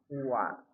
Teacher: Wa dua bibir dibulatkan.